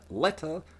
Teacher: The final vowel in letter is the best example of a rhoticized comma vowel